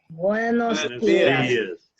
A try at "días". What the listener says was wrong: Careful with those D's. You want to put your tongue up in the roof of your mouth, behind your front teeth.